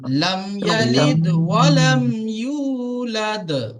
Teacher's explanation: يولد এখানেও ইজহারে সাফাবি আছে, আর এখানে কি আছে, ওয়াও সাকিনের ডান দিকে পেশ হলে ওয়াও মাদ্দা হয়, ওয়াও মাদ্দাকে এক আলিফ টান দিয়ে পড়তে হয়